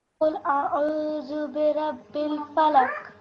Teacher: And when there is a sukoon on a Qaf, then that Qaf turns into a Qalqala letter. So then you have to make a jerking or jumping sound.